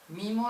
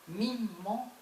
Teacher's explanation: eso es una M larga, que es una consonante distinta